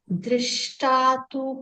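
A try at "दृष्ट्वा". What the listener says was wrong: Drishtva, Drishtva. There is a va down.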